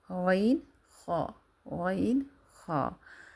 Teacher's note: اس کے بعد غین اور خا ہے، یہ حروف حلق کے اوپر کے حصے سے ادا ہوتے ہیں